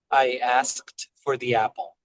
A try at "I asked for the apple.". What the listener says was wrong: I think that you can move a little bit more quickly through asked, asked for. It really is a mouthful. We've got the S, the K, the D, the F, the R. lot of consonants really quickly there.